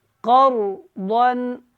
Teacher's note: ضن کر کے نہیں پڑھیں گے کیونکہ آگے آپ کو ہا نظر آ رہا ہے حروف حلقی میں سے، تو یہاں پہ اظہار کریں گے